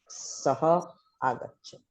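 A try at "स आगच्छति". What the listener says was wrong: Sa Agacchati, not Saha Agacchati. Saya Agacchati. Just adding that, right? Yakara plus A, So Sa Agacchati. Yakara dropping, you have Sa Agacchati.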